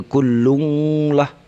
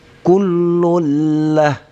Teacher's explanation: Ya, apabila tanwin bertemu dengan lah dan atau ro, atau nun mati ketemu dengan lah atau ro, maka hukumnya idgham bila gunnah. Idgham artinya dimasukkan, ini lun dimasukkan ke dalam la, bila jangan gunnah, jangan didengunkan. Jadi tidak boleh kullung lah, tapi kullullah, ya jelas inilah kullullah, inilah lung masuk di sini digabung.